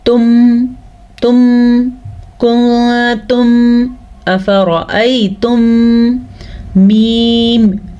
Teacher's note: اور شفوی اس لیے کہتے ہیں کیونکہ میم کا تعلق ہونٹوں سے ہے, میم دونوں ہونٹوں سے نکلتا ہے